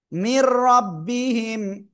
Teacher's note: ওকে, আর ঈদগামে বেলাগুন্নার অক্ষর দুইটা, র লাম, ওই দুইটার একটা অক্ষর আসলে কি করব? আমরা গুন্না ছাড়া মিলিয়ে পড়ব